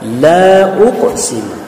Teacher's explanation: Panjangnya 3 alif sama dengan 6 harokat. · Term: mad jaiz munfasil